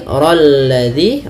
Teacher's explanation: rolladzi r tebal lamnya tipis